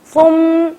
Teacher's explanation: ثم پہ ہم نے تشدید ہے تو میم پہ غنہ کرنا ہے